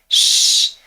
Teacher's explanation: The tongue comes close to the palate, but there's no full closure. What we can hear is the air friction. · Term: fricative